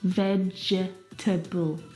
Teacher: We don't pronounce that second syllable.